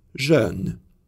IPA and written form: ʒœn (jeune)